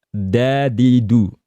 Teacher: di dal Arabiyah atau dal di tajwid ini, dia harus dilafalkan dengan di pangkal gigi seri atas